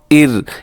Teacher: یہ را باریک ہوگا کیونکہ یہ را ساکن ہے اور اس سے پہلے والے حرف کے نیچے زیر ہے, اسے ار آپ نے باریک کرنا ہے, پوری کوشش کرنی ہے, اور اس کے بعد جو را ہے وہ موٹا پڑا جائے گا کیونکہ را سے پہلے پیش ہے.